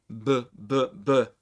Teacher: bilabial which means that it's produced with both lips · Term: Bilabial sound